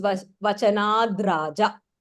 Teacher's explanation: Vachanat, there is a Sandhi happening there. So it becomes Vachanad Raja